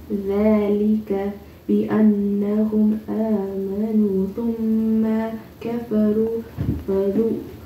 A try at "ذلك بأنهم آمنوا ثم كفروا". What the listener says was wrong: This is a ta, and you're confusing it with another letter. I don't know what letter you're confusing or what you're trying to sound off.